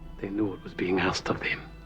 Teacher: he weakens his voice into a somber tone while talking about the sacrifice of the islanders